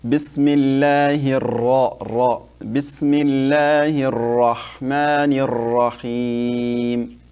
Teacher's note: when you say Bismillah, make sure to make the ra, make it heavy, okay? Like make it fat.